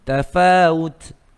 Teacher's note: Kita berhenti dekat huruf ta, bukan ta marbuta, maka dia ada hamas.